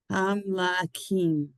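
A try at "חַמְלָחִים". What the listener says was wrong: Yeah, it's not quite the K sound, but there you go. Ham la chim. Ham is a syllable. Ham, like not quite ham, but ham, like Hamburg. Hamburger. Ham la is a syllable unto itself. It's a letter and a vowel. Ham la. And the last 2 is 2 letters with 1 vowel. Chim.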